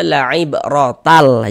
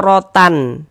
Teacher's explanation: Bunyi tanwinnya masuk melebur ke huruf lam. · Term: idgham bila ghunah